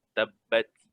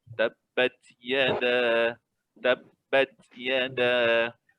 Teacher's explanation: Bila kita matikan ta, dia ada sedikit angin.